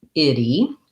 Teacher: basically like the word it actually the word not it because we don't really say the t there we do more of a flap so it sounds like idi and this is